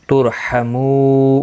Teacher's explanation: را ساکن سے پہلے پیش ہے، اس لیے را ساکن پر پڑھا جائے گا۔ ترحمو، مو واو مدہ ہے، ایک الف کی مقدار کے برابر کھینچ کر پڑھیں گے، اور وقف کی صورت میں نون ساکن پڑھا جائے گا، وقف بالاسکان ہوگا۔